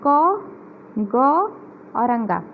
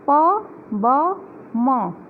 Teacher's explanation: जिसके उच्चारण में कम हवा की आवश्यकता पड़ती है, वे अल्प प्राण व्यंजन कहलाते हैं। अर्थात जिसके उच्चारण में मुंह जो है कम खुलता है और कम हवा मुंह में जाती है तो उसे अल्प व्यंजन कहते हैं।